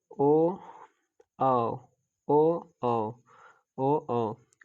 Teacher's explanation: ओ को उचार स्थान कंठ ओट से